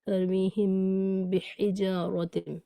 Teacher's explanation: اخفا کے وقت، اور نہ ہی بالکل ملا لینا ہے، نہ تو بالکل منہ کھلا رہے اور نہ بالکل بند ہو، بلکہ ہلکا مل کر جو با کے مخرج سے اور کچھ میم کے مخرج کے قریب ہو، غنّے کے ساتھ پڑھیں